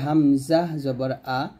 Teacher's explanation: হামজা টা হলকের শুরু থেকে উচ্চারণ হবে